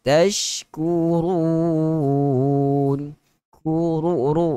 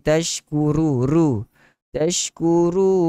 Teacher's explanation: kurun, ra baris hadapan. Tentu sekali kita kena baca dengan tebal. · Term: huruf ra